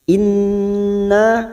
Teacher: nun yang bertasdid gunnah mustaddada kita tekan selama 3 harokat.